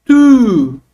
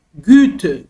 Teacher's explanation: É um som que sai com a boca arredondada, os lábios arredondados, melhor dizendo.